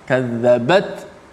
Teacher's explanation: Sebelum tu ada ta mati. Ta tu dah sifat dia berangin dah.